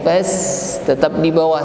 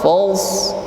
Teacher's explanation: Lain dengan sin yang sifatnya istifal. Fas, ringan saja. Fas, tetap di bawah suaranya, datar. Namun shad, fals, nah, suaranya agak naik. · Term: isti'la